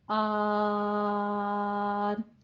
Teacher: اس کو ایک دم میں آن کے وقف نہیں کروں گی. آن 6 حرکتوں برابر لمبا کھینچنا ہے وقف کی صورت میں